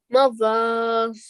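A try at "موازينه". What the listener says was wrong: Okay, when you're saying the ma, it has to be softly expressed. So mawazinu.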